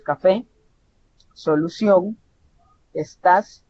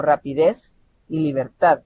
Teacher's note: la mayor elevación de voz se produce en la última sílaba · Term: agudas